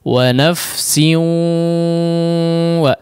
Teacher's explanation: digunnahkan ya, artinya dia masuk ke khayshum ya suaranya. Tidak hanya wa nafsi wa di bibir saja tidak ya, tapi ada juga yang diarahkan ke khayshum. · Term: idgham